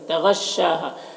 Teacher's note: تغشاها غین حروف مستعلیہ میں سے پر پڑھیں گے